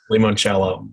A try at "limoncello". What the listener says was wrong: Wrong. It's lemon first, you moron. That's how lemon is spelled. Yeah.